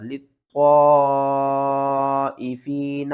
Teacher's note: یہاں پر ہم نے طا کو موٹا کر کے بھی پڑھنا ہے، مد بھی کرنی ہے کھینچ کر